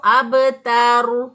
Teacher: تو ہم اس کو پڑھیں گے هو الابتر. تا کو باریک پڑھیں گے، را کی وجہ سے اس کو تا کو موٹا نہیں کریں گے. اب تور نہیں پڑھیں گے اس کو، اب تر.